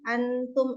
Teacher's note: Kemudian yang kedua antum ikhfa. Nun mati bertemu dengan salah satu huruf ikhfa dibaca samar-samar yaitu nun dengan ta